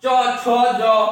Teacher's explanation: তালু, মুখের মধ্যে উপরে যে জায়গাটা, এটাকে আমরা তালু বলি। জিহ্বাটা ওই জায়গাতে টাচ করি। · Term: তালব্য বর্ণ